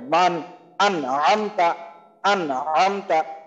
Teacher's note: হ্যাঁ, নুন সাকিন বা তানবিনকে আমরা যে টোটাল চার ভাবে পড়তে পারি, তার প্রথমটা হলো ইজার মানে স্পষ্ট করে পড়া, মানে এখানে নুন সাকিন বা আমরা যেভাবে পড়ছি পড়া প্রথম দিকে পড়া শিখছি সেইভাবে পড়া, এখানে নুন সাকিন বা তানবিনে কোন রকম পরিবর্তন হবে না, গুণনা হবে না, জাস্ট স্পষ্ট করে নুন সাকিনের উচ্চারণটা হবে